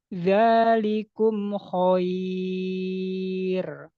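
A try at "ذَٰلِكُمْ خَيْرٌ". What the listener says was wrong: Nah, ini tadi sedikit mantul. Zalikum khair.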